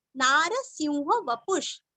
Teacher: विसर्ग का उच्चारण आधा श